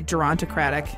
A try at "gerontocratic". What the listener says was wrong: Geronimo! Gerontocratic. Yeah, you're saying Geronimo-tocratic.